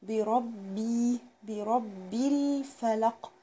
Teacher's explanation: قل اعوذ بربي، برا البه مكسورة والراء مفتوحة، يبقى بربي، وشدد على الباء اللي هي الأخيرة ديت. ليه؟ علشان هي مشددة